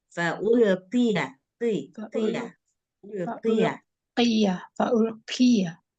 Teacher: Qaf kalau dia posisinya berbaris kasroh, dia harus tetap tebal sedikit. Nah, jangan fa'ulqiya.